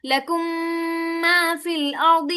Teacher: पहला हुक्म है इदगाम, मीम साकिन के बाद अगर दूसरी मीम आ जाए तो इदगाम होगा, यानी पहली मीम को दूसरी मीम में दाखिल करके एक मीम मुशद्दद की तरह अदा करेंगे